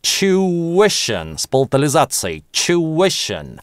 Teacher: Некоторые британцы и практически все американцы говорят two-ition, без [j]. А можно его произносить как Geoff Lindsey рекомендует с «ch» в начале chew-ition, с палатализацией